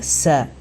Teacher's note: സീന് അത് നാവിനെ പരത്തി വെച്ചുകൊണ്ടാണ് ഉച്ചരിക്കുക